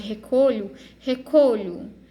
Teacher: Agora, se ela for átona, tiver um som fraquinho, como é no caso de recolho, recolho. O lhu aqui, ele tem um som fraquinho, então é uma sílaba átona.